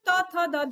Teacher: जब हमने त थ द ध बोला तो हमारी जीभ ने दांत को टच किया